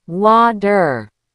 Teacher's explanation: In the US and Canada, we almost never say a true T in the middle of a word. It turns into a fast D sound.